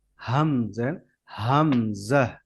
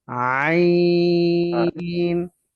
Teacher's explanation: হামজা হয় গলার নিচ থেকে, অর্থাৎ কণ্ঠনালীর নিচ থেকে, শুরু থেকে, অর্থাৎ একবারে বুকের ভেতর থেকে বাতাস আসে, হামজেন হামজা।